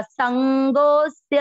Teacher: इसमें संगोस जो लिखा हुआ है ये स्य के पहले यहाँ पर एक अवग्रह आएगा, आप बोलते हुए भी उच्चारण करते हुए आपको लग जाएगा संगोस्य, गो को अपन खींच रहे हैं क्योंकि यहाँ अवग्रह है